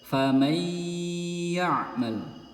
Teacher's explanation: Jadi huruf nun sukunnya melebur ke huruf ya dan digunahkan